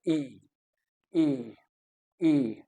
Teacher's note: ये widely open जो है नहीं है। और जो साउंड जो है प्रोड्यूस हो रहा है that is being produced at the front of the mouth.